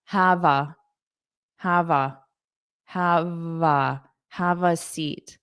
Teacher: notice you hear that v on the A